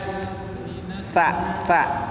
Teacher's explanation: ujung lidahnya ditempelkan di gigi, di antara gigi atas dan gigi bawah